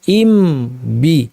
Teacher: ইম শেষ করে ঠোঁট দুইটা আবার উঠায় আবার নতুন করে বা বলতে হতো ইম, কারণ দুই ঠোঁট লাগিয়ে মিম বলেছি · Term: ইজহার